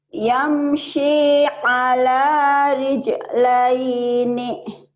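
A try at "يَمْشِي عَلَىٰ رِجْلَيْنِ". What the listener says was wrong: Nih-nya jangan ketinggalan kalau dibaca apa adanya ya. Yamshi ala rijlaini. Laini gitu. Kalau dihentikan nanti lain lagi jadi madlin. Yamshi ala rijlain gitu. Ya, ada tekniknya. Dihentikan apa dibaca apa adanya gitu.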